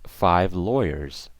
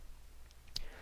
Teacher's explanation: You see at the end how it's like a Z, it's not an S. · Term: Z sound